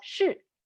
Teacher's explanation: Fourth tone, very quick and sharp.